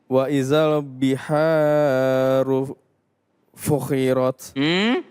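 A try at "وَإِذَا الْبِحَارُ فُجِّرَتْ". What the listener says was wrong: Di mana titiknya? Wa idzal biharu. Iya, kalau titiknya ada di bawah di sini berarti dia fujirat. Kalau ada di atas berarti dia fukhirat.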